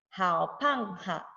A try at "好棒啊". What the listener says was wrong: 好棒啊. No H at the third.